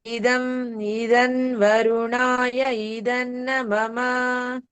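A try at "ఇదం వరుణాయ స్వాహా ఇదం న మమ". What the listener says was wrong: ఉమ్, సో స్వాహ చెప్పలేదు.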